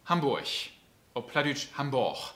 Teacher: das g am ende wird immer ein ch